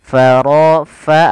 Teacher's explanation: alirkan nafas pada lafal fa, ini jangan diganti dengan pa. Nah, ini salah, tapi dia fa.